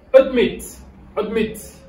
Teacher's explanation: dans admit, on a l'accent on the second syllable.